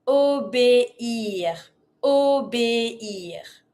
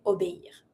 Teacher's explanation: Really dissociate the E with the high accent and the I R.